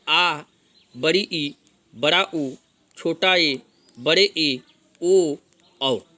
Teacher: इनके उच्चारण में ह्रस्व स्वर की अपेक्षा दुगना समय लगता है, अर्थात 2 मात्राएं लगती हैं। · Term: दीर्घ स्वर